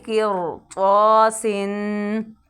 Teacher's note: اب یہاں پہ را پر ادا ہو رہی ہے کیونکہ را کے بعد حروف مستعلیہ میں سے طا ہے، تو را ساکن کے بعد حروف مستعلیہ میں سے کوئی حرف آ جائے تو را ہر حال میں پر ادا ہوگی.